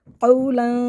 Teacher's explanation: قاف کو موٹا پڑھنا ہے، لام کو باریک کرنا ہے